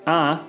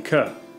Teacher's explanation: ah is louder than k so we would say that ah is more sonorous than k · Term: sonority